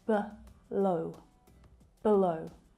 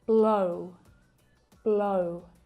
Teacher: the first syllable is unstressed in below, and you can hear the very, very lazy schwa sound.